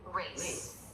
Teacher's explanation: So, there's a lot of lip rounding for a beginning R.